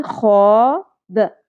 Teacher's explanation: خو کو بھی پر کرتے ہوئے کھردرا پن اور خراش پرومیننٹ رکھیں گے. خو، مد اصلی ہے، ایک الف کے برابر کھینچنا ہے.